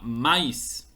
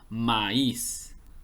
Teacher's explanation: forma correcta de pronunciarlo la palabra correcta es maíz y aquí como la sílaba tónica recae en la vocal débil se separa de la vocal fuerte y se forman dos sílabas aquí hay un yato es decir una separación de vocales no